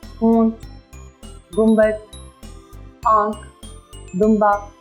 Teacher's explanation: नून गुन्ना वो अलामत है जिसमें नून की अलामती तौर पर आवाज़ निकलती है, हल्की सी नाक से आवाज़ निकलती है